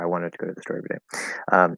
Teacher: want, go, store, first syllable of every and day are all stressed